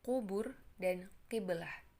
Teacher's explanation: seperti melafalkan bunyi K yang keluar dari langit-langit mulut yang lunak